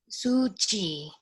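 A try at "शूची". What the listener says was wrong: Both are long. Su also long and chi also. That E. U and E both are long.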